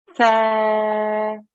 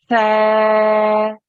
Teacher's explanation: take the tip of your tongue and put it between your teeth at the front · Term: th sound